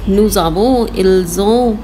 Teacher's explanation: When merged it makes the z sound